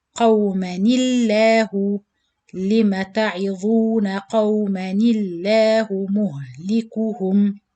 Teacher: To join this noon ساكن with the lam شد فتحة in the word Allah, you have to change it into noon kasra, and changing the noon sakin into kasra will also change the lam in the word Allah into light lam, because we know the lam in the word Allah, if the letter before it fatha or dhamma, you pronounce it heavy lam, but if it's kasra, you pronounce it light.